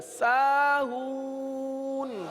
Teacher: آخر میں نون کو ظاہر کریں، قلقلہ نہ کریں. ساہون یہ غلط ہو گیا.